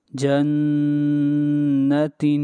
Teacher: جیم نون زبر جن، نون زبر نا، جن، تا 2 زیر تن، جنت۔ نون کے اوپر غنہ ہو رہا ہے اس لیے کہ نون مشدد ہے